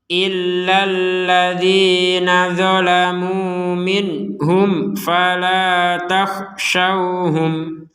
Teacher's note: Ada nun sukun bertemu ha, maka kita baca dengan jelas. Mim sukun bertemu fa, kita juga baca dengan jelas.